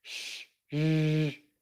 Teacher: For sh and zh, our tongue is further back in the mouth and our lips are rounded.